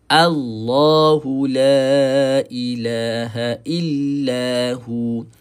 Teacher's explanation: Jadi Allah ni jangan baca dengan O, tapi dibaca dengan A.